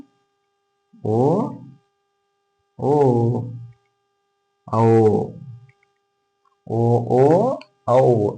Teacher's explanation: ಕಂಠ ಮತ್ತು ತುಟಿ ಎರಡಲ್ಲೇ ಉತ್ಪನ್ನ ಆಗ್ತವು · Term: ಕಂಟೋಷ್ಟ್ಯ